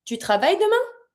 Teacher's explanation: That is the full sentence as a sentence, not a question. Then you just put the question mark at the end and you raise your voice. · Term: la voix monte